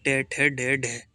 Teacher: हिंदी की मूर्धन्य ध्वनियां हैं